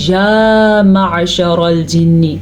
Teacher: یا کو لمبا کریں گے کیونکہ یا کے اوپر کھڑی زبر ہے۔ عین کے تلفظ کا خاص خیال رکھنا ہے کیونکہ یہ عین ہے، حمزہ نہیں ہے۔